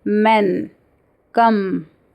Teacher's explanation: And these are nasal sounds. Here the air is blocked in the mouth but it comes out from the nose. So while producing m sound, our lips are closed.